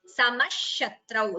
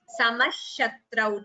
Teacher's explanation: when it combines as a sandhi the visarga becomes samashatrau so instead of the visarga we chant it as samashatrau